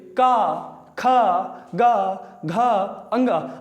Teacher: का वर्ग कौन से व्यंजन है भैया? कंठ व्यंजन है।